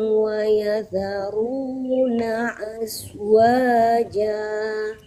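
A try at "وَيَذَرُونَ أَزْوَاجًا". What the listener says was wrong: Nah bukan as. Kalau as itu huruf sin.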